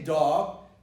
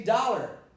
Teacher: It's an ah. It's not an aw.